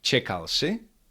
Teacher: the question does not have any special structure and it is only made by intonation in spoken word